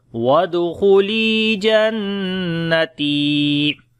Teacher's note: دال کے اوپر قلقلہ کریں گے، خا کو موٹا پڑھیں گے، لام کو لمبا کریں گے، یا مدہ ہے، نون کے اوپر جو ہے وہ شد ہے، غنہ کریں گے، تا کو لمبا کریں گے، یا مدہ ہے پھر، تو پڑھیں گے وادخلی جنتی۔